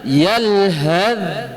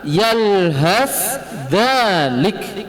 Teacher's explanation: Masuk ke hukum idgham yaitu memasukkan sa ke huruf dal secara sempurna